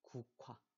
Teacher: 그, 흐가 만나서 그도 없어지고 흐도 없어지고 크가 됐어요. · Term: 격음화